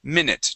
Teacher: that U is actually going to sound like a short I sound, and that E makes no sound at all.